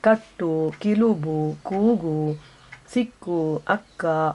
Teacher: ನಾಲಿಗೆಯ ಹಿಂಭಾಗವನ್ನು ಅದರ ಮೇಲಿರುವ ಮೆತ್ತಂಗುಳಿನ ಮೇಲಿರಿಸಿ ಉಸಿರನ್ನೊಮ್ಮೆ ತಡೆ ಹಿಡಿದು ಬಿಟ್ಟಾಗ ಕ ಎಂಬ ಹುಲಿ ಹೊರಡುತ್ತದೆ